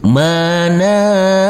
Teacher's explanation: huruf nun kita baca panjang dengan panjang dua harakat karena huruf nun yang berdamah u ini bertemu dengan wau yang